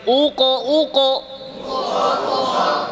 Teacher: আরো মোটা করে কফ জিহবার গোড়া থেকে